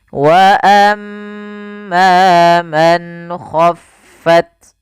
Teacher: Izhar artinya jelas. Apa yang dijelaskan di sini adalah suara nunnya.